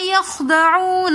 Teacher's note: خو کا تھوڑا سا مخرج واضح کر کے نکالنا چاہیے تاکہ ادائیگی صحیح طریقے سے آئے اور خو موٹے حروف میں سے ہیں. یخدعون واو ساکن اور سے پہلے پیش ہے تو یہ واو مدہ کہلاتی ہے اور واو مدہ کو کھینچ کر پڑھتے ہیں.